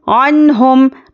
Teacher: نون ساکن کے بعد حروف حلقی آ گیا تو کیا کرنا ہے، اظہار کا قاعدہ ہے، تو یہاں پر ہم نون کو ظاہر کر کے پڑھیں گے